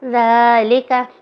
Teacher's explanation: کھڑے زبر کو 2 حرکات یا ایک الف یعنی 2 حرکات کے برابر لمبا کرنا ہے